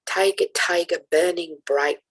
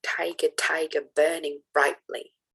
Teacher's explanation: this is an example of catalytic writing where you have a missing syllable essentially at the end of the line · you have a missing syllable essentially at the end of the line. Tiger, tiger, burning bright, instead of tiger, tiger, burning brightly, which would fulfill the stress pattern. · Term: catalectic writing